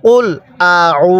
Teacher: হামজা এর মধ্যে টান দিব না আইনের মধ্যে এক আলিফ টান দিব